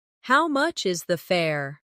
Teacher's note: The stress is on how much and fare.